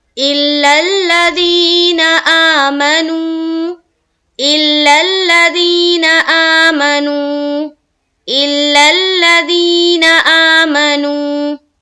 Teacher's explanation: ذی میں کھینچنا ہے 1 الف کے بقدر، آ میں کھینچیں گے 1 الف کے بقدر، نو میں کھینچنا ہے 1 الف کے بقدر، باقی کسی بھی جگہ کھینچنا نہیں ہے۔